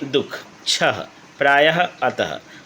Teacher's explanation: विसर्ग यह वह ध्वनि है जो कुछ तत्सम शब्दों के स्वर के बाद ह रूप में उच्चारित होती रहती है।